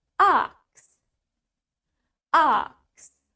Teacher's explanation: Remember, British has longer A.